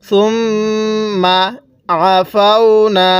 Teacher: এই আইনটা অনেকেই আমরা ভুল উচ্চারণ করি। আইনটা যদি আমরা গলার মধ্যে একটু চাপ দিয়ে পড়ি তাহলে আইনটা সহি শুদ্ধ উচ্চারণ হবে। এছাড়া আমরা অনেকেই এই আইনটাকে হামজা পড়ে থাকি।